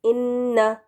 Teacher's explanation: یہاں پر ہم نے نون کے اوپر جو زبر ہے اس کو لمبا نہیں کرنا، شارٹ واول ہے